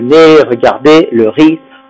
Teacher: Habituellement, le Z final, on ne prononce pas en français